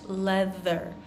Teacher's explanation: it's a voiced th